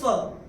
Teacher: और यहाँ पे चौथे चरण में ये जो विसर्ग आ रहा है, विसर्ग के बाद है प, और अगर विसर्ग के बाद प या फ होता है तो विसर्ग का उच्चारण होता है फ। जैसे हम फूंक मारते हैं फ